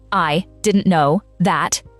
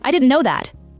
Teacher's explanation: I didn't know that. And the T at the end of didn't has effectively gone. It's a cluster. 3 consonants in a row, and the middle one drops.